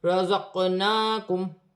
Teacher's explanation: قاف ساکن ہے، حروف قلقلہ میں سے ہے، قلقلہ کے ساتھ ادا کیا جائے گا۔ نون پر کھڑی زبر ہے، ایک الف کی مقدار کھینچ کے پڑھا جائے گا۔